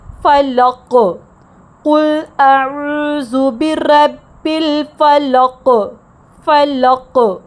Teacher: آیت میں ہے قل اعوذ برب الفلق، یہاں پر وقف کرنے پر حرف قاف ساکن ہو جاتا ہے۔ فلق قاف جہر کا حرف ہے، جہاں زبان کی جڑ اوپر کے تالو سے مضبوطی سے لگنے کی وجہ سے سانس کا بہاؤ مکمل طور پر رک جاتا ہے اور ایک گونجدار کلکلا پیدا ہوتا ہے۔